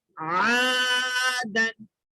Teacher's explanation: عین حلق سے ادا ہونا، آدن نہیں بولنا